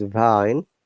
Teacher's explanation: when you're pronouncing v you can feel that our vocal chord is vibrating and two of our lips are touching each other